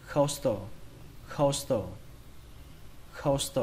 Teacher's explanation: từ này trọng âm của nó rơi vào đầu tiên